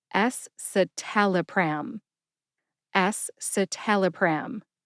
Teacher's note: Put all 5 syllables together and you get Escitalopram. Emphasize S and TAL. TAL gets the most emphasis.